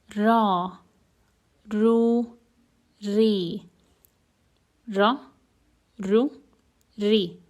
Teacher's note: This ra is quite different than the American R because the ra is pronounced with the front tongue touching the oral cavity, while some vibration is happening in the vocal cords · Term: ra letter